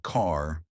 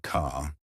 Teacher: Unlike British English, Americans love their R sounds, but they pronounce them softly. Car sounds like car, not ca. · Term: soft R sound